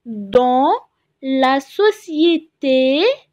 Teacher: نلاحظ إن ال A N إن ال A N بتخرج من الأنف هنا، اسمها voyelle nasale.